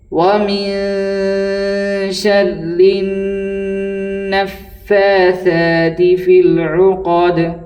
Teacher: دال کے نیچے زیر ہے، لیکن چونکہ آیت ہے اس لیے ہم دال کو جزم دے کر کے پڑھیں گے۔